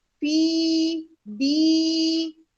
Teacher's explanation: یا ساکن سے پہلے زیر اور اللہ کے لام سے پہلے بھی زیر ہے, اس لیے ہم اللہ کا لام باریک ادا کریں گے. فی دی دونوں حروف مدہ کو برابر ادا کیا